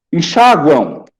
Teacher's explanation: nós temos um ditongo nasal no final de enxáguam